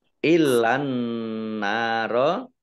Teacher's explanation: alif lamnya alif lam syamsiyah, ditandai alif lamnya tidak dibaca, langsung masuk ke huruf berikutnya yaitu nun, ditandai dengan ada tasdidnya. · Nun tasdid dibaca gunnah atau mendengung, ditahan 2 harokat. Nun fathah alif mat tobi'i panjang 2 harokat.